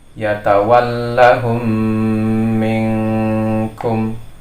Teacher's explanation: suara mim sukun ini dimasukkan kepada mim yang kedua, seolah-olah seperti tasydid, dan memang harus disempurnakan bacaan tasydidnya. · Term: idgham mutamatsilain